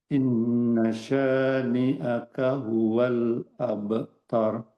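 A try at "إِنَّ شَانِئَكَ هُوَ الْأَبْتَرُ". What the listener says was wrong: Ta tipis abtar.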